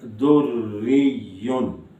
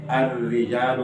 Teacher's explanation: اگر را کے نیچے زیر بھی ہو اور شد بھی ہے تو بھی را باریک ہوگی